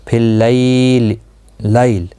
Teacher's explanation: فی اللیل، لیل یہاں پر یالین ہے، تھوڑا نرمی کے ساتھ کھینچ کر ادا کریں گے اور وقف کی صورت میں لام ساکن پڑھا جائے گا